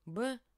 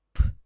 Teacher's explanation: Я сейчас покажу, например, «б». Если вы это «б» скажете шепотом, вы будете потрясены, оно превратится в другой звук.